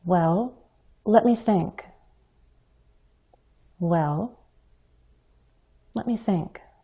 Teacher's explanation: can use a fall rise to suggest hesitancy for some reason many speakers use a fall rise on the well · Many speakers use a fall rise on the word well